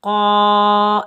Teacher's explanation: قاف کے اوپر زبر، آگے الف خالی ہے، یہ الف مدہ ہے، اس کو ہم ایک الف کی مقدار کھینچ کر ادا کریں گے۔ قاف کو ہم موٹا پڑھیں گے کیونکہ قاف حروف مستعلہ میں سے ہے۔